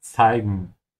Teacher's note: Remember to pronounce the Z sound with a T in the beginning, then S.